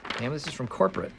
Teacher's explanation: the most stressed word here is corporate, with secondary stress on the word this